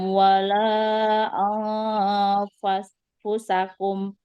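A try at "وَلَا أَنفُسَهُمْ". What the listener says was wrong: hum bukan kum ya. Ulang. La yastati'una nasrakum wala anfusahum yanzurun.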